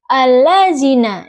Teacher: huruf dza yang makhrajnya di tengah lidah dan gigi seri atas dengan getaran